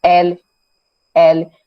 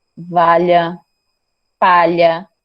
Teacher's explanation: paredes lateral é quando você fala e o som sai pelas paredes laterais da boca. L, L. Você sente a vibração nessa região.